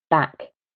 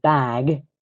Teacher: So, for example, in a pair of words like back and bag, the final sound, the k or the g, that will impact how long the vowel sounds.